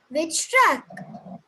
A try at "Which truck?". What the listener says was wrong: No, there you stressed on truck. You have to stress on which.